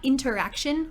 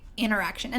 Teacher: The t, again, gets dropped. It's not interaction, you say interaction.